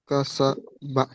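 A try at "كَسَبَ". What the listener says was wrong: বাহ, মাশাআল্লাহ, সুন্দর পড়েছেন।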